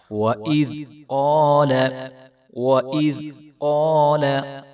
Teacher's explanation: وَإِذْ قَالَ وَإِذْ تو اس کو جو ہے وہ ہم ہلا کر نہیں پڑھیں گے، یہ پہلے بھی ہم پیچھے 3-4 بار بتا چکے ہیں کہ اس کو جو ہے وَإِذْ بغیر ہلائے اور ذال کی آواز نکالے پڑھیں گے، نہ کہ زا کی آواز۔ وَإِذْ قَالَ وَإِذْ قَالَ قَالَ تو قاف موٹا ہے اور آگے الف ہے، تو اس کو ہم ایک الف کے برابر لمبا کریں گے اور جو ہے قاف کو خوب موٹا کر کے ادا کریں گے۔